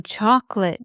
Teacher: Two syllables, not three. Like chalk lit,